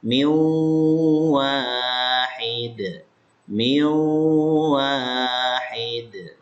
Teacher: ini nun ketemu dengan waw idgham bi gunnah. Maka nanti nun dengan wawnya ini masukin ke sini, ke gunnah, ke khayshum, ke pangkal hidung.